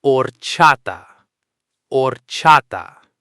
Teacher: It looks like it might have a hard H sound, but the beginning is completely silent.